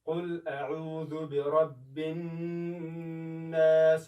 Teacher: برب الناس هم باید سخت وویل شي یعنې فشار پرې راشي، هم د پوزې څخه باید اواز راشي. هر چیرې چې په قرآن کریم کې نون راشي شد ولري همدا یې طریقه ده د ادا کولو. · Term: غونه